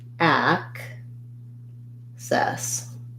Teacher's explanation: in access i have first syllable stress we have the black cat vowel and then we have the red tent vowel